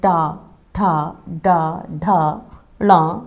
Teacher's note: मूर्धन्य जिसमें मूर्धा यानी तालु का जो कठोर हिस्सा है उस जगह पर जब जीवा हमारी स्पर्श करती है उस स्थान को और वायु में जो श्वास निकल रही होती है उसमें अवरोध पैदा होता है।